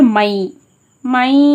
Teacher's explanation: இங்கே இதுதான் மால் குன்னாவின் எழுத்து யா இடம் பெற்றிருக்கு. அதனால இன்ன சவுண்டை முற்றிலுமாக நீக்கிட்டு யா சவுண்டை சேர்த்து மேல் குன்னா அப்படின்றதுக்காக ஒரு அலிஃப்க்கு நிகராக குன்னா பண்ணி மூக்கில் நிறுத்தி ஓதணும். மண் அப்படின்றத இன்ன நீக்கிட்டு மை மை அந்த மாதிரி ஓதணும்.